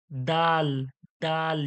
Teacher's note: আর এটা দেখুন দাল, শক্ত ও পাতলা আওয়াজে দাল, দাল, দাল। জিভের আগাটা দাঁতের গোড়ায়, উপরের দাঁতের গোড়ায় লেগে শক্ত হয়ে আর পাতলা হচ্ছে দাল